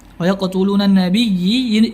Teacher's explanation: Kemudian dzalika bi annahum, nun bertasydid, kanu yakfuruna bi ayatillahi wa qalqalah sughra wa yaqtuluna nabiyyi, ya bertasydid maka diberikan hukum an-nabr, ya naik sedikit suaranya